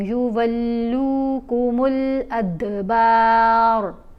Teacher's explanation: दाल के ऊपर हमने कलकला किया।